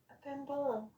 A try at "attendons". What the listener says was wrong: It cannot be attend on.